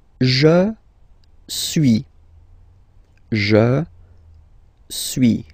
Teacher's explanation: as you've been noticing, you don't pronounce the final S